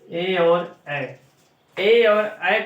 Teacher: ए और ऐ का उच्चारण स्थान है कंठ तालव्य, कंठ तालव्य यानी कंठ गले से और तालु से